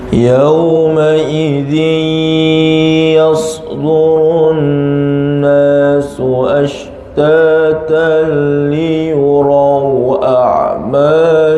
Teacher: Ingat, tebalkan pada ra, liyurau